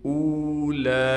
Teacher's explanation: حمزہ کو ہم ایک الف کی مقدار کھینچ کر پڑھیں گے